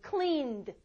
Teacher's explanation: clean 울리거든요. 그래서 여기 D도 울립니다. D 울리는 D 있어요.